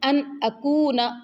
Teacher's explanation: یہاں حروف حلقی حمزہ آ گیا، اس لیے نون کے اوپر اخفا نہیں کریں گے۔ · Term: اظہار